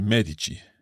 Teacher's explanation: Medici, because the emphasis is on the first syllable, on the syllable me.